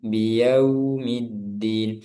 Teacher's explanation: condongnya waw itu ke u. Jadi keadaan posisi bibir ke depan, maju ke depan, seperti bunyi vokal u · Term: sifat lin